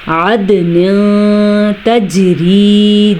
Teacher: جھٹکا دینا ہے، جیم کے اوپر قلقلہ ہو رہا ہے